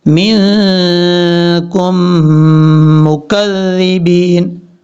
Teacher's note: یہ ادغام مثلین ہوگا، یعنی دو حرفوں ایک جیسے حرفوں کا آپس میں ادغام